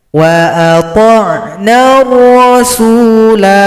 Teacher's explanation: Kalau kita berhenti, bulat lonjong tidak menghilangkan tanda panjang. Huruf lam tetap dipanjangkan dua ketukan.